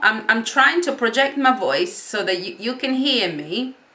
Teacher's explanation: And I was trying to sort of, 1 minute I was whispering and now I'm talking. Now, can you hear that my voice is louder, but it's also crackly. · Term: push the voice